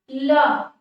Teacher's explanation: पार्श्विक वर्ण ल, ल का जब हम उच्चारण कर रहे हैं तो जो मुख से निकलने वाली वायु है वो किनारे किनारे से बिल्कुल निकल जा रही है